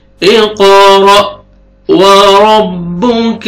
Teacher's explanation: را کو فتح ہے، را کو موٹا کر کے پڑھیں گے اور حمزہ جھٹکے سے پڑھیں گے۔